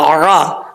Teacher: عین کو پڑھتے وقت خاص خیال رکھنا ہے کہ حمزے کی آواز نہیں آنی چاہیے